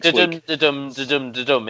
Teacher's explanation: So it's an unstressed syllable followed by a stressed syllable. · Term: iambic pentameter